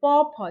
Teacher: प फ जो कि हमारे लिप ओष्ठ में मिलन होती है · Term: प वर्ग